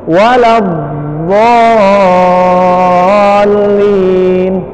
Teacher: Menurut bahasa artinya memanjang, sedangkan menurut istilah pengucapan huruf yang disertai memanjangnya suara dari awal sisi lidah sampai ke akhirnya. Sifat ini hanya dimiliki oleh huruf do. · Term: al-istitalah